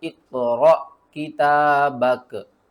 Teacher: क़ाफ़ यहाँ पर जो है वो हरूफ़ क़लक़ला में से है, तो क़ाफ़ के ऊपर आपने क़लक़ला करना है और रा के आगे देखिए अलिफ़ है, अलिफ़ साकिन है।